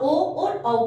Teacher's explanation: कंठ और ओष्ठ से, यानी कि गला और होठ से, किसका, ओ और औ का।